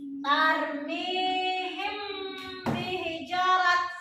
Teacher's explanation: Cara membaca ikhfa syafawi yaitu dengan suara yang samar antara mim dan ba pada bibir, kemudian ditahan kira-kira 2 harakat atau 2 ketukan, seraya mengeluarkan suara ikhfa dari pangkal hidung.